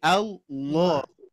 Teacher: huruf lam ini bisa menjadi tebal Ketika menemukan lafaz Al Allah